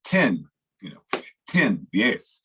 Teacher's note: la T es algo aspirada, o sea, tenemos que soplar con la T en inglés.